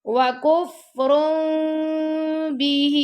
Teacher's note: नून की आवाज को मीम में बदल देना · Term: इकलाब